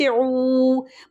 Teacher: مکمل ہونٹوں کی گولائی سے اس کو ادا کیا جائے گا، پیش بھی اور واو کو بھی